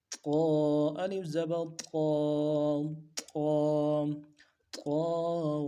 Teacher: طا، الف زبر طا، الف مدہ ہے، ایک الف کی مقدار میں کھینچ جائے۔ طا حروف صفیریہ میں سے موٹے حروف ہیں، موٹا پڑھنا ہے۔